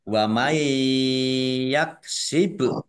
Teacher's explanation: nun sukun bertemu dengan huruf ya, bacaan idgham bi gunnah masuk dengan mendengung, yaitu mendengung ya ditandai ya-nya ada tasdidnya, ditahan 2 harokat biar tampak dengungannya.